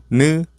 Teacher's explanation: the tip of the tongue touches the upper gums.